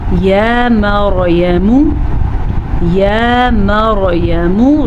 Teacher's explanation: را ساکن سے پیچھے حرف پہ زبر ہے تو را ساکن کو ہم پر پڑھیں گے